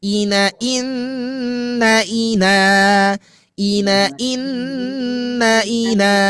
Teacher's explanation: Dia harus tetap ditahan selama tiga ketukan hitungan lamban atau setara dengan dua harakat gunah.